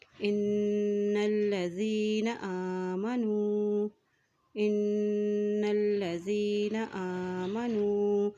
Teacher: हमज़ा के ऊपर खड़ी ज़बर है तो इसको एक हरकत लंबा अदा करेंगे